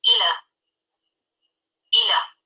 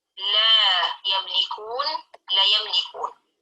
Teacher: Yang seharusnya dibaca mad tabi'i namun dibaca kurang panjang atau tidak dibaca panjang sama sekali.